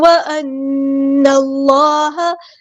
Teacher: نون کو ہم نے لام کے ساتھ ملا دینا، حمزۃ الوصل ہمارا ڈراپ ہو جائے گا ، اللہ کا جو لام ہے یہاں پہ بہت ہیوی موٹا · نون پہ غنہ زمانی اور ایک الف کے برابر رکیں گے